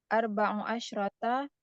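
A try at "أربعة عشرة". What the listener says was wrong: Arba'a asyrota. Nggak boleh arba'u. Arba'a asyrota ya.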